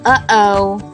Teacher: also a sound we say but don't really write like uh-oh you can feel your throat closing and opening